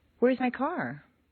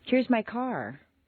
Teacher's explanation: They do, but usually a question will step upward until the very end where it takes one quick little downward step. A question rises a little higher than a statement with the same intonation pattern.